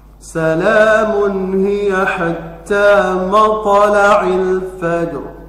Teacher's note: La-nya dibaca panjang 2 harokat di ayun, kemudian dhammah, tanwin bertemu dengan ha, maka dibaca izhar